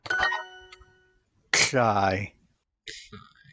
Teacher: released uvular stop with a scratchy sort of after effect